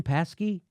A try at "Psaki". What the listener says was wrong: I think it's Psaki. I think they don't pronounce the P for some reason.